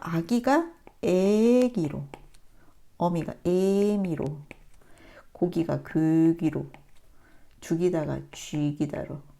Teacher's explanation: 뒤에 오는 전설 모음의 영향을 받아서 앞에 모음이 바뀌는 거기 때문에요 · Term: 역행동화